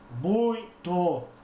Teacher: o som, a corrente de ar passa também pelo nariz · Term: ditongo nasal